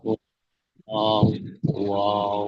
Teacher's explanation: তারপরে দেখেন 14 নম্বর মাখরাজ, একদম সরল একটা মাখরাজ দেখেন। দুই ঠোঁট না মিলে মাঝখান থেকে উচ্চারণ হয় ওয়াও